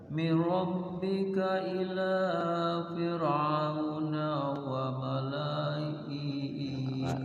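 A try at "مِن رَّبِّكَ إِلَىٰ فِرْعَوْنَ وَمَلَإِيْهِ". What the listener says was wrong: La-nya pendek itu. Wa malaih langsung. Mir rabbika ila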